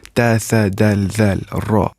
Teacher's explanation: These are al-huruf al-shamsiyah or solar letters. And these are pronounced with tip of tongue.